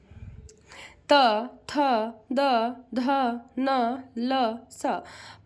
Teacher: त वर्ग का उच्चारण स्थान दंत होता है